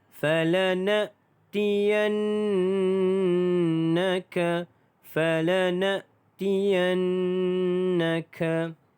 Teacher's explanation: Di sini nun yang ada tanda syaddah, maka kita wajib gunnah dengan 2 harakat.